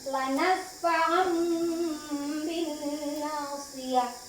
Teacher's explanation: Maka cara membacanya menyuarakan suara, ya, menyuarakan itu huruf nun sukun atau tanwin menjadi mim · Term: iqlab